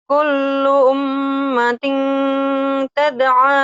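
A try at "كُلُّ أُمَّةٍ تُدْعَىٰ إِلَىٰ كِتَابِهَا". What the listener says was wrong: Tuh, tud'a bukan tada, tud'a. Tud, Kullu ummatin tud'a ila kitabiha.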